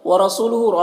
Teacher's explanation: وَرَسُولُهُ، را کے اوپر زبر ہے، را کو پر پڑھیں گے، سو میں واو مدہ ہے، ایک الف کے برابر کھینچیں گے۔ ہاں میں الٹا پیش ہے، یہ بھی واو مدہ کی طرح ہوتا ہے تو اسے بھی ایک الف کے برابر کھینچیں گے۔